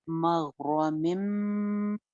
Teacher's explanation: मिम हो जाएगा, नून खत्म हो जाएगा। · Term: इदगाम